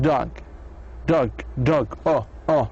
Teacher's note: it is actually mid-back vowel